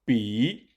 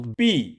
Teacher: However, 比 is the third tone, while 毕 is the fourth tone, so they are not entirely the same in pronunciation.